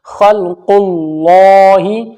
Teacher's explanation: اللہ کے لام سے پہلے قاف کے اوپر پیش ہے تو موٹا پڑھا جائے گا